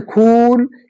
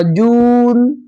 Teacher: चलिए जैसे एग्जांपल आपका क्या है, जैसे आपका हुआ खून, देखिए मैं खींच रहा हूं, वाव से पहले पेश हो उसको खींच कर पढ़ा जाए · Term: वाव मारूफ